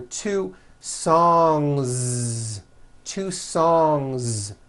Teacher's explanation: song ends with a voiced ng sound so if you make it plural don't forget to add a voiced Z ending